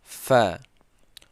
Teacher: Fa ini keluar antara gigi bawah dan bibir atas. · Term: huruf fa